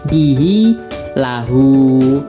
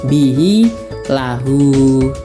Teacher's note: Mad silah qasirah setiap hi dan hu yang dibaca panjang panjangnya satu alif atau dua harakat